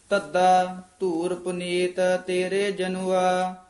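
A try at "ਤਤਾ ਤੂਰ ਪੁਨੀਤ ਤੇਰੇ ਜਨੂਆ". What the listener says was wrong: तद्दा तद्दा ते दद्दा नहीं बोलना दोवे तद्दे बोलने तद्दा इथे विश्राम ला दो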